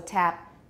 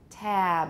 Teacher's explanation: you still need a bit of voicing at the end usually it stops about halfway through but we still need that voicing at least if we're pronouncing · before a voice sound, the vowel gets lengthened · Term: final voicing